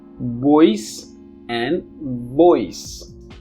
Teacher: For example, you can voice your concerns, but they are pronounced differently. The first one is bilabial, the second one is labiodental.